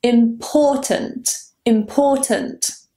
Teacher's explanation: The stress is on the second syllable. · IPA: /ɪm'pɔ:.tənt/